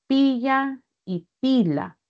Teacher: en pila y pilla la elle está cambiando por la l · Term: laterales